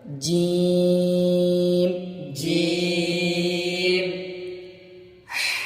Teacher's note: جیم کو 3 سے 4 الف کھینچ کر پڑھیں گے۔